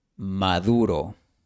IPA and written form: ma'ðu.ɾo (Maduro)